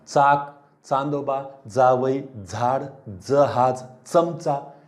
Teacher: आता यांचं तुम्ही देखील वाचन केले तर लक्षात येईल की अरे तुम्ही दंत तालव्य म्हणजे तुमचं दंत तालू ह्या भागाकडे जिभेचा शेंडा जातो, दाताच्या नंतरचा भाग, वरच्या दाताच्या नंतरचा भाग